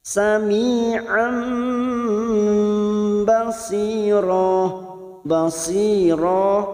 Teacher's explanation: Sami'an, huruf ain yang berharokat fathah tanwin, fathatain yang bertemu dengan huruf ba, membalik atau menukar dengan huruf mim. Kita dengungkan selama 3 harokat.